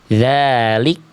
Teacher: Jadi jangan sampai ada dalalik jangan ada bunyi e-nya. Cukup dia dipercikan nafas saja. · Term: kaf sukun